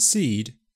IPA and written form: siːd (SEED)